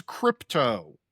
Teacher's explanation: It starts with a K sound, it has that plosive P in it, and it ends with an O.